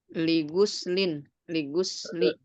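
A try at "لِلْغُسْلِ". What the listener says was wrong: Lil gusli. Kan ada alif lamnya ya. Lil gusli.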